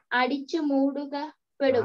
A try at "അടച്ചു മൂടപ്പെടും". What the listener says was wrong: അടച്ചു അടച്ചു മൂടപ്പെടും. അടിച്ചിട്ടല്ല അടച്ചു മൂടപ്പെടും.